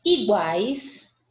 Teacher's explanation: eu tenho tritongo, semivogal, vogal e semivogal